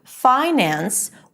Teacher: The primary stress is on fi.